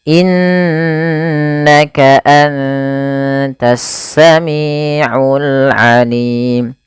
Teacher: Kemudian innaka sama, tidak hanya cukup dibaca innaka, tapi perlu ditahan suara gunnahnya 2 harokat